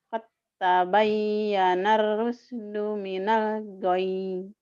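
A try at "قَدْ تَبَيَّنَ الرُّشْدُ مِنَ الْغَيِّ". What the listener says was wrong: Nanti tinggal sinnya dilatih ya. Sama entek-enteknya dihilangin. La ikraha fid din. Qad tabayyana shinnya nggak keluar.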